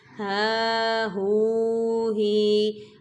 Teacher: یہ ہا حلق والا نہیں بلکہ سینے سے ادا کیا جائے گا